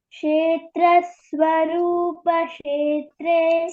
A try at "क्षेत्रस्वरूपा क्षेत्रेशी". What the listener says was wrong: Swarupa, there is a Dirgha here, okay? Dirgha, Swarupa, okay? Kshetra Swarupa Kshetreshi